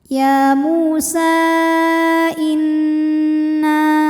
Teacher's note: Mad thabi'inya fathah panjang pada kata ya Musa, hamzahnya i pada kata inna. Maka sin panjang boleh empat boleh lima harakat. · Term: mad jaiz munfashil